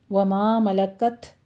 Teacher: تا ساکن ہے، ہمس کریں گے